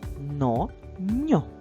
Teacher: в складі но приголосний н твердий